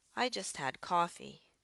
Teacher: So, for example, in declarative sentences like, I just had coffee, you'll notice that my voice went up on the just had and down on the coffee at the end. This is a rising, falling pattern.